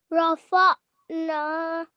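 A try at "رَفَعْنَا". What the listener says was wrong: Well done.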